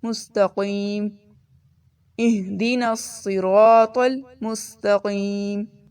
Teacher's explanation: آگے ہے مستقیم، اس میں قیم کو دیکھیں، اس کو قاف ہم نے لیسن نمبر 3 میں بات کی تھی، قاف 2 نقطوں والا وہ موٹا پڑھا جاتا ہے، اور اس کو کاف نہیں پڑھنا، باریک نہیں پڑھیں گے، اور نہ ہی خا۔